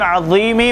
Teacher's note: लेकिन इस बात का ख्याल रखिएगा इसे मोटा अदा करना है, बारीक अदा करेंगे तो दाल हो जाएगा, उसका ख्याल रखिए कि दोनों में फ़र्क है। ज़ा अदा करते वक्त ज़बान की नोक सामने वाले ऊपर के दो दांत के सिरों से लगानी है मगर मोटा करना है · ज़बान की नोक सामने वाले दो दांतों के ऊपर के जो दांत हैं उसके सिरे पे टकरा दीजिए, ज़ा अदा होगा। लेकिन इस बात का ख्याल रखिएगा इसे मोटा अदा करना है, बारीक अदा करेंगे तो दाल हो जाएगा, उसका ख्याल रखिए कि दोनों में फ़र्क है।